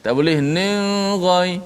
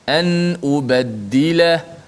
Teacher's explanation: Pastikan hujung lidah kena betul-betul mati pada makhraj nun. dan tidak boleh panjangkan gunnah. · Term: izhar